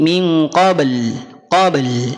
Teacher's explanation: sempurnakan qalqalahnya, pantulannya, lamnya juga dibunyikan